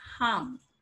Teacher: you're not articulating R sound here. You're just saying harm. So R is silent.